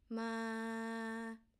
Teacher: this is a midtone which mean to count · Mid to mid. This is a mid tone